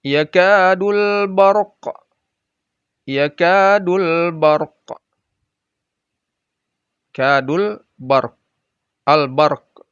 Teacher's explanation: Alif lamnya, al-nya dibaca jelas. Dan tandanya ada sukun di atas alif lamnya.